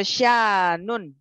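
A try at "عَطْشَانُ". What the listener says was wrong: Atau syanu, ini tidak bertanwin.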